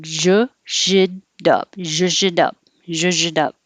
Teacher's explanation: in the expression the t changes to a d so it would sound like ju dub ju dub dub alzheimer's